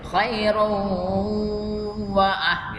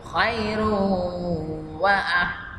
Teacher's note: ini tulisannya khairun tapi karena bertemu wawu ini dibaca khairu, namanya idgham bi gunah, didengungkan maka ditahan dulu ya.